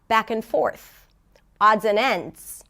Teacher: you reduce the pitch for the middle word for the connecting word, and then you raise the pitch, and it's usually a little higher by and large, right?